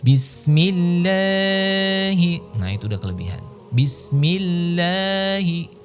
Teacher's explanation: yang mestinya hanya 2 harokat atau 1 ayunan itu kita baca melebihi gitu dari yang semestinya